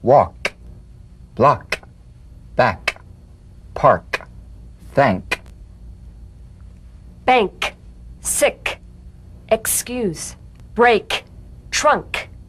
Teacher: With the tongue in the G position, let the tongue spring away in the soft, unvoiced click of the K drum beat. Feel a crisp tap and a pulsation in the back of the tongue.